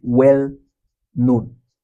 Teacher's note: We stress the second, right? So known is the stress.